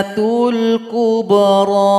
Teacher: panjangkan dulu huruf th en ketukan baru tasdid kepada huruf mim setelah tasdid nanti mim ini dengungkan dua ketukan